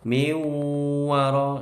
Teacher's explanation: nun sukun ketemu wawu, bacaan idgham bi gunnah. Dengung dulu